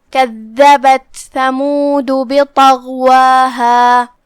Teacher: کلمت کذبت میں یہاں جو کہ دال پہ تشدید ہے، دال کی ادائیگی زبان کے سر اور اوپر والے دانتوں کے اندرونی کناروں سے ہے، اور جو کہ اس پہ تشدید ہے، لہذا 2 حرف کی مقدار میں ہم دال کو پڑھیں گے.